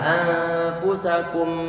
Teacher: Anfusakum, yang dipanjangkan bukan dhammahnya, karena di sana nggak ada bacaan mat. Tetapi yang ditahan tadi ataupun yang dilamakan itu adalah dari segi suara dengungannya.